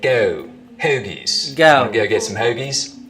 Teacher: Now another thing that starts to happen as we get down towards Philly is that the goat diphthong starts to move forwards in the mouth.